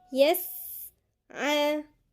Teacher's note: في هنا همس جريان نفس